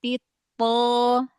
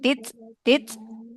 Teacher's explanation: th dia enggak punya sifat hames. Dia punya sifat syiddah ya.